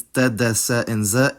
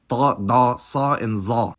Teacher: Arabic today has a phonemic difference between alveolar consonants [t] [d] [s] and [z], and alveolar pharyngealized (or “emphatic”) consonants [tˤ] [dˤ] [sˤ] and [zˤ]